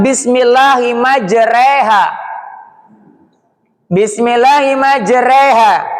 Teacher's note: Bismillahimajreha aslinya majroha, tapi dia dibaca antara fathah dan kasroh. Jadi miringkan namanya imalah.